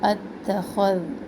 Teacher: خا موٹا حرف ہے اور ذال انتہائی نرم حرف ہے، تو خا کے ساتھ ذال کو بھی موٹا نہ کرے اور ذال کے ساتھ خا کو بھی نرم نہ پڑے.